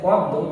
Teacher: নিয়মটা হচ্ছে দেখো, অ ধ্বনির পরের বর্ণের সাথে যদি জ ফলা থাকে, দেখো অ ধ্বনির পরের বর্ণের সাথে জ ফলা আছে, তাহলে ওই অ ধ্বনির উচ্চারণ ও এর মতো হয় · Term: সংবৃত